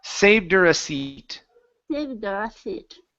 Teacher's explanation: now what you can do, you can drop the H